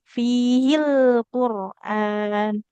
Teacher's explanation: Kalau huruf lam sukun jangan memantul. File fihil. Nah, dia enggak boleh ada pantulannya. Jadi, pastikan lidah kita tetap menempel ke gusi.